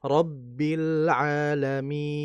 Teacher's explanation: Hukum asalnya dia dibaca dua harakat lebih sehingga kita baca rabbil alamin. Namun juga karena dia masuk bagiannya jaiz boleh kita baca dua harakat saja. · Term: mad arid sukun